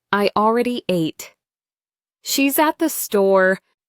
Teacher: For statements, the voice usually goes down at the end. That's a falling intonation.